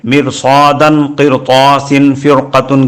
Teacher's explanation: سبق میں چند ایسی مثالیں درج کی گئی ہیں جن میں رائے ساکنہ سے پہلے زیر ہونے کے باوجود اس را کو پر پڑھنا ہوگا، کیونکہ اس میں رائے ساکنہ کے بعد حروف مستعلیہ آئے ہوئے ہیں